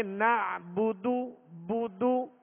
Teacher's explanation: بغیر کھینچے بغیر جھٹکا دیے معروف پڑھیں گے. ہونٹوں کو گول کر کے ادا کریں گے